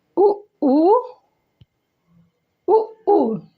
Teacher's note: जब हमने उच्चारण किया तो ओंठ हमारा गोल हो गया, दोनों ओंठ आपस में गोल आकार के बन गए, इसलिए ये वृत्तमुखी है।